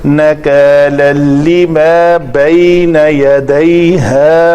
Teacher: نَكَالًا اور کَ پتلے حروف میں سے ہے تو الف پتلا ہوگا